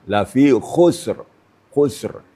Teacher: Yang sulit sini adalah huruf kha. Yang lain itu biasa. Jadi getarannya agak maksimal ya.